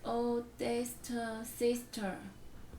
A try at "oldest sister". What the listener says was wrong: Not oldesta. That's what we're getting the problem. You're adding an You're saying oldest, and then when you put it with sister, it becomes the oldesta sister. And it's not the oldesta. It's just the oldest sister. Because you said oldesta. There's no ta.